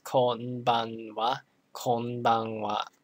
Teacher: the n, the syllable, it's pronounced n. It's one whole syllable. So it has the same weight as all the other syllables.